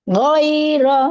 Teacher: di ghoinnya ini langsung kebuka fathahnya, bukan woi. Woi oh, kayak ada apa awalan dulu ya, langsung woiro.